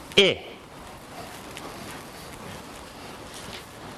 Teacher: this isn't an a lowercase L it's an uppercase eye okay it's created by taking the body of the tongue forward raising it and leaving the lips unrounded